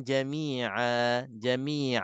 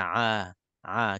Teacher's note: kita gantikan nun mati yang ada pada tanwin kita gantikan dengan Alif huruf mad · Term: mad iwad